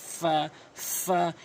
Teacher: ফা উপরের দাঁতগুলো নিচের ঠোঁটের পেটে রাখবেন